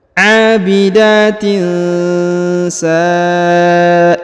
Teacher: Huruf ta-nya diberikan hembusan tipis nafas ya